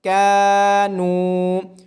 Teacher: کاف کو الف مدہ ہونے کی وجہ سے اور نون کو واو مدہ ہونے کی وجہ سے لمبا کیا جا رہا ہے